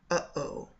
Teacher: It's just a stop. There's no sound. Okay. That is a glottal stop